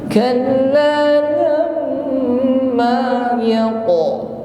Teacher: mim tasydid ditahan sampai berdengung